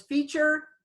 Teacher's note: Number 6 is feature. The T sounds like ch, so it's feature.